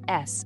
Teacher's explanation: A voiceless alveolar fricative like a hiss